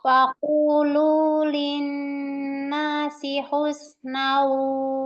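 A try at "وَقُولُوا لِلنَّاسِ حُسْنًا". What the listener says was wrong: Tadi bacanya wakululin nas. Oke, berarti salahnya lu-nya nggak panjang.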